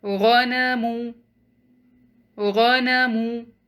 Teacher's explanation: you'll pronounce all these 3 alphabets single count, short.